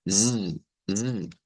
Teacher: una z, que vendría siendo la S vibrante